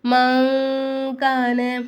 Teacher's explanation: நூனை சாக்கின் அப்புறமா காஃப் வந்துச்சுன்னா அந்த நூனை சாக்கின் நம்ம என்ன செய்யணும் மூக்கால மறைச்சு குட்னா செஞ்சு ஓதணும்